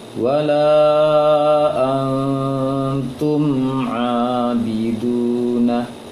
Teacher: Triknya bagaimana supaya tidak terpantul? Ditahan sedikit untuk mim dan tidak sampai dengung. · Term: mim sukun